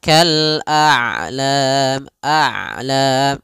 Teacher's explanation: Ain itu kedua-duanya tidak terlalu dialirkan, tidak terlalu ditahan suaranya. Maka kal a'lam a'la masih ada setengah-setengah. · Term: bainiah